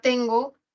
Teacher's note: ten va a ser la tónica y como termina en consonante va a ser trabada, termina en consonante, así que es tónica trabada.